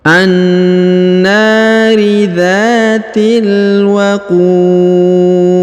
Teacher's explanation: Huruf ku ya dipanjangkan, boleh 2, boleh 4, boleh 6 harokat, karena di depannya terdapat waw sukun sebelum huruf pemberhentian, dan huruf pemberhentiannya huruf disukunkan atau dimatikan, sehingga kita baca pantul atau qalqalah ya, karena huruf di termasuk salah satu huruf pantul atau huruf qalqalah ya kalau disukunkan.